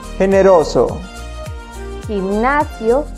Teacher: goma, gusano, globo, The second sound is a soft G when it comes before an E or an I. It makes a sound that goes almost similar to the H in the English word hello, but it's more in the back of the mouth and a bit longer too.